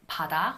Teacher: when this tigut comes between two vowels and is in the middle of a word, it does tend to have a voiced property. In this case, it would be correct to romanize it as a D.